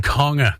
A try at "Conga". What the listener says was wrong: No, you hit the hard G.